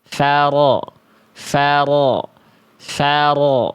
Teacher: Farodo, farodo, farodo, enggak, tapi faro, faro. Hurufnya tebal, getarannya enggak berlebihan tapi juga tidak hilang. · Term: huruf ro